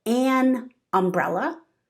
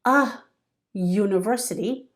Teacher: the U in university has a Y sound, so it's considered a consonant sound.